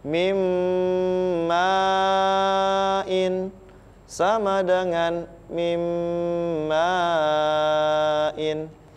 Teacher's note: Dibacanya, didengungkan selama 3 harokat. Mim ma'in sama dengan mim ma'in. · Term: idgham bi gunnah